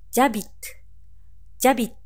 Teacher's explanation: 動詞、アビテが無音のアッシュから始まっているため、次の母音、アーと主語のジュの間にエリジオンが起こり